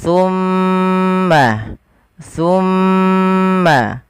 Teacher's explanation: ada bacaan ghunah pada lafal mim yang berharakat tasydid